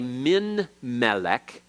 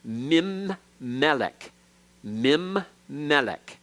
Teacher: the noon then elides or assimilates into the following letter, and to show that the letter has disappeared, to be a signal to us, a dagesh is put in that letter to assimilate it.